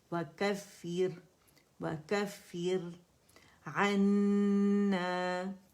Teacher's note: را باریک ہے کیونکہ را ساکن سے پہلے ہمارے پاس کسر آ رہی ہے، زیر آ رہی ہے